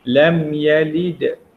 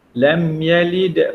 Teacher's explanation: Itu berlaku tengah kalimah, itu disebut sebagai qalqalah sughra. Qalqalah kecil je, bunyinya lam yalid. Dia tidak kuat sangat, sederhana.